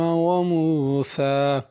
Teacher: موسیٰ آخر میں کھڑی زبر ہے، اس کو کھینچنا ہے